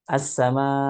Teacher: Kemudian kemudian au an tushaddida ba'da maddin hamzatan, ataupun dia mentasydidkan hamzahnya, menghentakkan gitu, mentasydidkan hamzahnya yang datang setelah huruf mad. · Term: mentasydidkan hamzah berlebihan